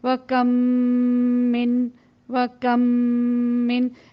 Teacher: اور پھر اس کی جو نیچے کی مثال ہے وہ یہ کہ وَكَمْ مِن لگا کے یہاں پہ ایک ہی میم ہے لیکن دراصل یہاں پہ دو میم ہیں، یعنی کہ اس طرح سے میم کا میم کے ساتھ ادغام ہوا غنے کے ساتھ کہ ایسا محسوس ہوا کہ یہاں پہ ایک ہی حرف تشدید والا ہے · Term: ادغام شفوی